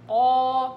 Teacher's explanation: على نفس وضعية القاف جبت الألف قا عشان تطلع معايا قاف صحيحة وألف مفخمة صحيحة